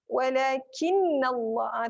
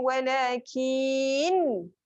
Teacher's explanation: Jangan panjang pada kaf, tapi dengung dia panjang daripada nun. Nun tu yang double ya.